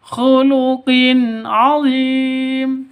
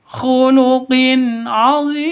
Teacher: tanwin bertemu dengan ain, jelas terang, tidak boleh sentak, tidak boleh dengung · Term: izhar